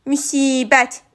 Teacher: i saiti uzun tələffüz olunur, qapalı saitdir